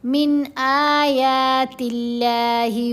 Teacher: اگر یہاں کوئی پڑھے نا من آیات اللہ تو غلط ہے، یہ جو من کی آواز کو لمبا کیا، غنہ کرنے کی کوشش کی، نہیں کرنا، جلدی پڑھیں گے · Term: اظہار